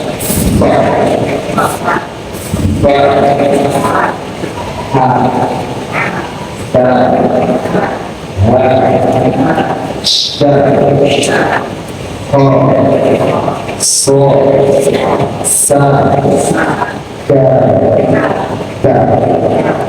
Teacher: ketika bertemu huruf-huruf yang 10 ini, maka mengucapkannya harus disertai dengan nafas